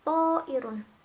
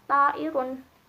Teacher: Yang pertama, konsonan yang mempengaruhi vokal seperti contoh to'irun, dimana konsonan to ini kan sifatnya kuat, huruf termasuk huruf itbaq, dibacanya tafhim, itu mempengaruhi huruf vokal fathah, dimana yang aslinya dibaca a, kemudian karena ada pengaruh dari huruf to, bacanya to'irun, gak dibaca ta'irun, karena itu konsonan yang mempengaruhi vokal, jadinya to'irun.